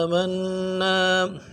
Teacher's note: قالوا آمنا کھڑا زبر کو کھینچنا ہے، اور تشدید ہے، زور دینا ہے، اس کے بعد الف مدہ ایک الف مدار میں کھینچنا ہے۔